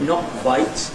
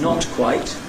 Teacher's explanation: There’s an assimilation here, so you get ‘not quite’ [nɒk kwaɪt] rather than [nɒt kwaɪt].